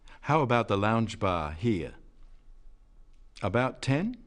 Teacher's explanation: he says at about 10 as a question